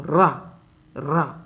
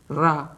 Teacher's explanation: जैसे आप रा का उच्चारण करेंगे तो रा रा तो 2-3 बार जो है जीभ को ध्यान से जो है करिए, रा। तो जीभ जो है आपकी जिह्वा 2-3 बार जो है कंपन हल्के हल्के कर रही है। आप जब उच्चारण करेंगे तो इसको बहुत अच्छे तरीके से समझ पाएंगे। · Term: प्रकंपित व्यंजन